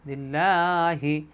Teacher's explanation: আল্লাহ শব্দের ডানে জের আসার কারণে আল্লাহ হবে, ল হবে না, মোটা হবে না, পাতলা হবে